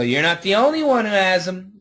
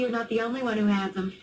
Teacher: the TH will probably start blending with the Z